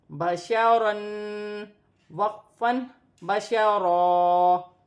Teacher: وقف کی صورت میں ایک زبر گر جائے گی اور ایک زبر ایک الف مدہ میں بدل جائے گی اور را موٹی پڑی جائے گی